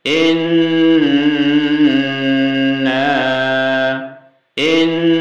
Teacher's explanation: إنا jadi ini nun tasdid. Nah, kalau nun tasdid itu bacaannya gunnah, jadi didengungkan. Panjang dengungnya bisa 3 hitungan jari.